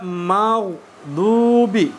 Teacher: huruf gha adalah huruf rakhawah. Ya, sehingga di situ ada aliran suara yang tersisa.